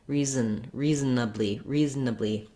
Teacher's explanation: just go quickly from the z to the n